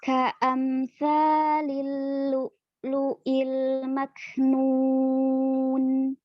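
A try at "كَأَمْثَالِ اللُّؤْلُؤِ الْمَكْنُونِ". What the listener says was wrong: Ka'amsa ya, ada mim sukun. Mim tutup kan makrotnya dari safatain ya, dari bibir ya, bibir yang keluar. Bukan tapi sempurnakan bertemunya dua bibirnya. Ka'am ya, menutupnya dulu.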